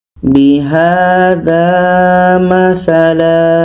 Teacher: Tanwin atas kita buang satu, akhirnya seperti ini, menjadi panjang alif. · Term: mad iwad